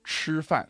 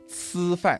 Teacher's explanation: So the ZH and the CH, they kind of get changed into just Z and S.